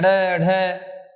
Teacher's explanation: उत्तक्षिप्त का मतलब हुआ फेंकना, यानी इन व्यंजनों का जब उच्चारण करते हैं अड़ ढ, तो यूं लगता है कि इन व्यंजनों को जीभ के द्वारा आगे की तरफ फेंका जा रहा है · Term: उत्तक्षिप्त व्यंजन